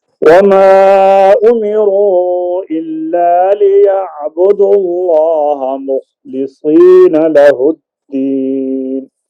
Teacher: ليعبدوا اللہ کے اندر جو اللہ کا لام ہے اس کو آپ نے پر پڑھنا ہے پہلے پیش آ گئی ہے